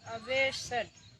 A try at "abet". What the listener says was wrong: शेड नहीं, अबेस्ट